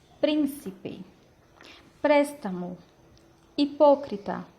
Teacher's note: Palavras que têm a maior força de voz na antepenúltima sílaba e geralmente elas vêm acentuadas. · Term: palavras esdrújulas